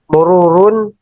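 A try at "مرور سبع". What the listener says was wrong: Jangan tanwin, mururu sab'in seperti itu.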